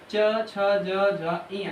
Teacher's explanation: इसका तालु से होता है।